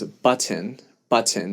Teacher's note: But if for whatever reason I were singing that song in a context that I needed slightly more proper pronunciation, I would sing it as button, button. So I'd give an entire vowel to the end and I'd pop the T.